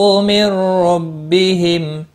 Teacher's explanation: نون ساکن کے بعد حروف یرملون کا را آیا ہے، ادغام ہوگا لیکن غنہ نہیں ہوگا۔ بہم میم ساکن پر اظہار ہوگا، اس اظہار کو اظہار شفوی کہتے ہیں، ملانے کی صورت میں بھی اظہار شفوی ہوگا، اور وقف کی صورت میں میم ساکن ہی پڑھا جائے گا۔